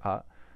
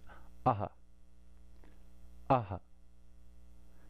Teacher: it's a little bit of force at the end of it we don't just say ah we put a little force behind the air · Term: v saga